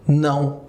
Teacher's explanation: ele é decrescente nasal, ou seja, eu utilizo o nariz aqui, ele faz a parte da instrumentalização para ajudar a pronunciar essa palavra aqui, que é o não, ok?